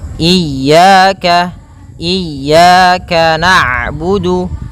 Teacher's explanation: Kemudian pada lafal ya ada mad thabi'i berupa fathah bertemu alif maka dua harakat.